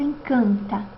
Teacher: ainda ter o traço de nasalização o que que quer dizer o vé palatino abaixa e com isso parte do fluxo de ar passará pelas cavidades nasais isso pode ocorrer Principalmente quando a vogal estiver perto de um